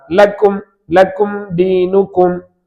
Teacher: லாம் சாதாரணமா எல்லா மொழியிலும் இருக்கிற மாதிரி தான். அதாவது நாக்கின் முன்பகுதியின் இரு ஓரங்கள் அப்படியே வாயின் மேல் பகுதியில் இணைந்தால் ல உண்டாகும்.